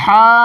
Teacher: اس میں تیز حلق سے بالکل ہوا نکلتی ہے، اسی ہوا کے ساتھ اس ہا کو ادا کریں گے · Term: ہائے حطی